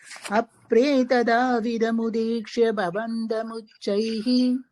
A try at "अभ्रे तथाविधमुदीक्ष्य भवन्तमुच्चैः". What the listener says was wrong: மூணாவது லைன் மேல தூக்காதீங்க.